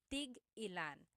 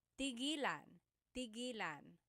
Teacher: when there's a hyphen in it, you have to have that glottal stop.